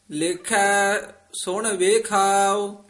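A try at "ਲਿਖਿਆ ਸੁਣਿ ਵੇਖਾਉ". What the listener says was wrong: सुन वे कठा नहीं बोल देना, वखरा पद उच्चारण करना। लिखा सुन विखाओ आम ना सुन विखाओ कह जन्दे हां।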